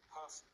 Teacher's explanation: In the word person, the first syllable is stressed, and the second syllable has a schwa sound.